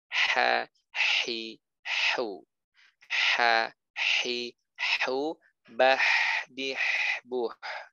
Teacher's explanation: H sama dengan ain, tempatnya di tengah tenggorokan. · Arti rokhwah dia mengalir suara. Udara mengalir, suara mengalir kalau huruf H. Dan istifal, dia bunyinya tipis.